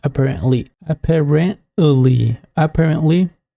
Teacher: it's like a glottal t in the american accent you can say apparently apparently apparently it's just for a smoother